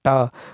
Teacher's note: मूर्धन्य अल्पप्राण अघोष व्यंजन वर्ण